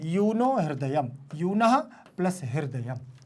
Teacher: विसर्ग संधि है, विसर्ग के स्थान पर ओ हो जाएगा, इसे उत्त संधि भी हम लोग कहते हैं।